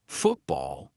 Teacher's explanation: And another one for the glottal T. When a syllable ends in T and it is followed by a consonant sound, we're going to use the glottal stop.